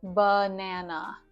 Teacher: the schwa sound is the uh sound. Like in the word banana. There's two schwas in banana.